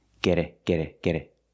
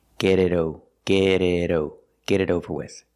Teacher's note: The T in get is pronounced with a fast D sound.